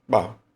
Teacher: Você fala um pouco mais estendido esse R aqui